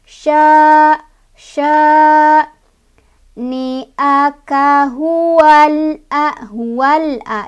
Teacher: Sebabnya karena ada alif didahului oleh huruf berbaris fathah di huruf shin. Cara bacanya panjang 2 harokat. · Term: mad tabi'i